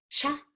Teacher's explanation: so I press these together and I'm trying to show that my tongue tip is not touching anything it's actually in the middle of the mouth